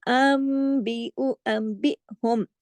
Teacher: नून साकिन के बाद फौरन बा आ गया और उसके बाद हमजा है, तो यहाँ थोड़ा झटका भी है और नून जो है वो मीम में बदल जाएगा।